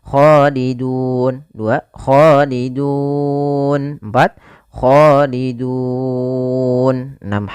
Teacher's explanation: Boleh 2 harokat, boleh 4 harokat, dan boleh pula 6 harokat. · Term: mad arid disukun